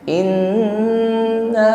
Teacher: ditahan dan sempurnakan dengungnya. Adapun nun tasydid di sini tingkatan dengungnya akmal, dengungnya paling sempurna ya. Sampai terasa dengung yang nyaman di rongga hidung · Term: gunnah musyaddadah